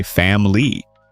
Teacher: many people swallow the second I and say family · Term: swallow a sound